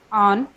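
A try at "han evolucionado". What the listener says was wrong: No, वो गलत हो गया वहाँ पे, वो हान अलग होगा, वो हान नहीं है, आन है, आन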